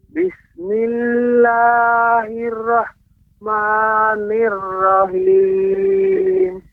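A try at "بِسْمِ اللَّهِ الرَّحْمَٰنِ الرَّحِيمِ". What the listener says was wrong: Ya, haknya lebih ditipiskan lagi Bapak. Hak kecil. Ha.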